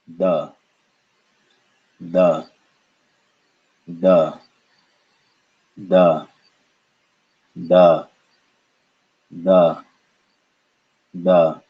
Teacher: this is the soft d sound that's dental with no air